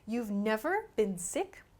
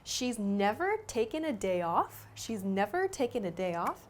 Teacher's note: But with your voice, you should emphasize the word never.